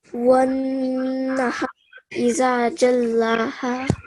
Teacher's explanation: And then the noon has shadda, so nasal sound.